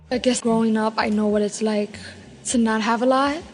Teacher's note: New York Latino English speakers have a particularly light L.